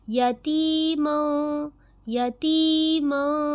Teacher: اور یہاں پہ دیکھیں یا ساکین ہے، یا ساکین سے پہلے زیر ہے، یہ بن گیا یا مدہ، 2 الف برابر اسے کھینچا